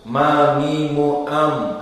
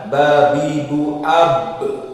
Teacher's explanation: Maka makhraj mim dengan ba sama, syafatain bil intibaq. Namun bedanya mim lebih lunak daripada ba.